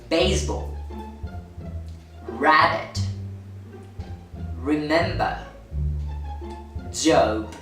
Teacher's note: The main difference with P is that B is a voiced consonant sound